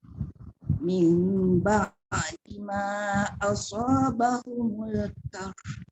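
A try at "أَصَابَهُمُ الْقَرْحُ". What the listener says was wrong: Jangan kar. Kalau kar bermakna ka. Ini qaf. Qarh. Dia jangan tengok ha dulu. Kita rasa susah dan berat sebab nak melepaskan angin ha. Tapi sebelum tu lepaskan qaf dengan ra dulu. Asabahumul qarh.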